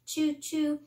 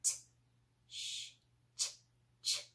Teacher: We want to break that and turn it into a nice sharp t, sh, ch sound. And the ch sound is made up of a T, a real sharp T, t, t, and the sh sound. And when we blend other sounds together, it sounds just like the ch sound.